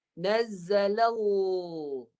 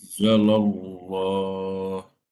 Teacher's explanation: Bunyi lam mati dia tebal.